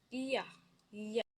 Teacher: sounds produced by raising the middle part of the tongue to the hard palate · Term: palatal